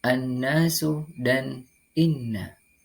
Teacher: Cara membacanya, yakni dengan mendengungkan nun tasydid tersebut 2 sampai dengan 2,5 ketukan. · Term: gunnah